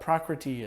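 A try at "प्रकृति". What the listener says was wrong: Is it prakriti? It's not a long E. Prakriti.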